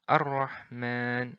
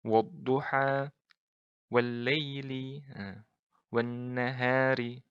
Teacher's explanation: Jadi bukan Al-Rahman, tapi langsung melebur ke huruf Ra. Ar-Rahman. Nah. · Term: lam ta'rif syamsiyah